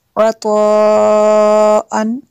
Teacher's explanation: عطاء عطاء، مد متصل ہے کیونکہ ہمزہ اسی کلمے میں ہے۔ آگے تنوین کے بعد حا ہے حروف حلقی میں سے، تو یہاں پہ اظہار ہوگا، غنہ نہیں کریں گے۔